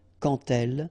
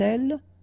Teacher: when you will have this D, you will phonetically pronounce it like T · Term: liaison